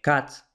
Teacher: Luego la A de cat está un poquito demasiado lejos. Luego la A de cat, vemos que de hecho está más cerca de la E que de la A